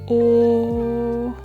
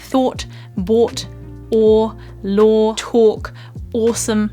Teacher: my lips are quite closed and round but the back of my mouth is still quite relaxed oh and there's a slight curling and lifting of my tongue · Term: curled round o sound